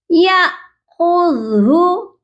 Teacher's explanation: ٹھیک، یہاں پر دیکھیے یا حمزہ زبر یا کو حمزہ کے ساتھ جھٹکا دے کر پڑھیں گے